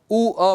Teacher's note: ऊ अ बोलेंगे तो व सुनाई पड़ने लग जाएगा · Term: अर्धस्वर